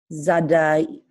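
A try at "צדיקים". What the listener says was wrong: So this is a tzade, so not a Z sound, but it's tzadi. So it's like cats. When you say cats, the TS at the end of cats.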